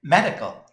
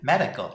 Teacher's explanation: medical이라는 단어도 우리는 medical이 아니라 medical, 약간 CAL 부분을 좀 강하지 않게 읽어야 되겠어요